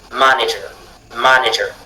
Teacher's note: le fait que la syllabe ma du départ soit accentué vous oblige à prononcer manager